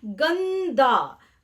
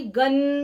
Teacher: अनुस्वार की ध्वनि बोलते समय नाक से निकलती है।